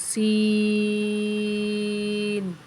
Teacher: سین میں سیٹی کی آواز نکالنی ہے اور اس کے اندر مد ہے، اس کو زیادہ لمبا کریں گے